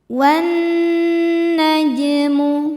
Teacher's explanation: Jim sukun dihukumi qalqalah sughra karena huruf qalqalah jim sukunnya sukun asli dan ada di tengah bacaan. Cara bacanya dipantulkan jimnya dengan pantulan yang kecil.